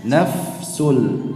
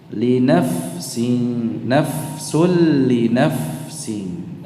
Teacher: Mengalir suara dan nafasnya fa, namun langsung ya ke huruf setelahnya.